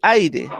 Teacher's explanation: es un diptongo porque se forma la sílaba, pues digamos, una vocal abierta y una vocal cerrada